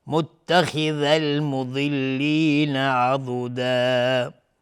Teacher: خا از حروف استعلا غلیظ تلفظ میشه